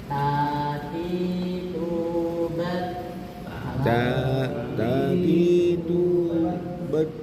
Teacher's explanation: huruf ta ujung lidah bertemu dengan pangkal gigi atas